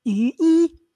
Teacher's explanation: The pronunciation with the zero onset, there's a break, right?